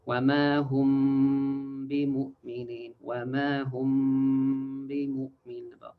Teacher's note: Don't forget that you extend the ghunna about 2 counts. So 2 counts like وما هم بمؤمنين وما هم بمؤمنين, about 2 counts.